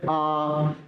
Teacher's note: मुंह फैल जा रहा है गोल पूरा नहीं बन पा रहा · इसमें गोला तो बन रहा है दोस्तों, मगर मुंह क्या हो रहा है हमारा फैल जा रहा है। जैसे आ तो मुंह फैल जा रहा, गोल पूरा नहीं बन पा रहा। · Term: छोटा आ, आवृत्तमुखी